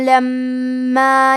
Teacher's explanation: لما میں میم پہ تشدید ہے، تو ہم حرف المیم کو دو حرف کے برابر پڑھیں گے